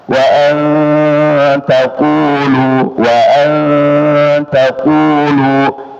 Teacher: Nam bis wal fahsya wa an taquulu wa an taquulu di sini nun sukun ketemu ta ikhfa ya ikhfa e dan ikhfa itu ya ada ada dengungannya dua harakat